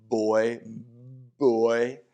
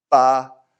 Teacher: in English, we have a little bit of voiced action going on when we say boy, boy. In Chinese, that voice thing isn't happening, so it sounds a little crisper, like ba. It's like the English sound in SP, in like sport.